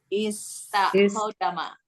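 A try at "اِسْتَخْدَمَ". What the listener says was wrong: Jangan dihidupkan koknya mati. Istakhdama. Kan wazannya istaf'ala ya.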